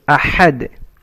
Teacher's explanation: ح from mid of the throat